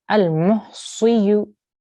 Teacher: Make sure Sod, this is your thick sound. So even though it's got a kasra, you still have to keep a round mouth and try to make a thick, heavy sound.